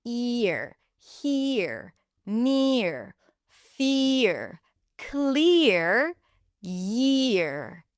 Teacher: The next one is ear, ear, ear. A tense E sound, and then the tongue drops and lifts up for the R.